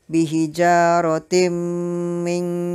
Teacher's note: timnya dibaca dengan ditekan dan berdengung